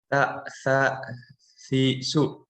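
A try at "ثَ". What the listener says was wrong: Nah, coba sa lebih seperti lidahnya digigit.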